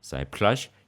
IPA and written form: sajpɬa:ɕ (сеплъащ)